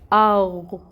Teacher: غین حروف مستعلیہ میں سے ہے، اس کو پر پڑھیں گے اور حمزہ کے ساتھ غین کو ملائیں گے، ٹھیک ہے۔